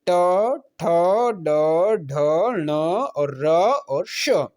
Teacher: मूर्धा से बोले जाने वाले वर्ण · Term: मूर्धन्य